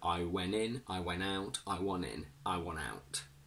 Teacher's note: I want Vivian. In informal lazy English, when we have NT plus a vowel, we can simply remove the t altogether.